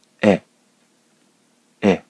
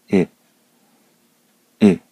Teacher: こちらは口を大きく開いて、え、と言うんですけれども、こっちは口を狭く開いて、いに近いえを言います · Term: 口の開き方が違う